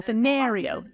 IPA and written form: sɪˈnɛrioʊ (Scenario)